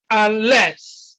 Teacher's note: stresses on the second syllable because the first syllable is a prefix